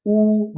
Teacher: जब आप उ बोलोगे तो होठ गोल करने पड़ते हैं उ बिना होठों गोल के आप उ नहीं बोल सकते कोशिश